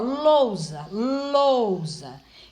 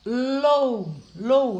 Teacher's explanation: aqui o U é pronunciado com menos força, lou, lou. Então, o O, ele é mais forte. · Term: semivogal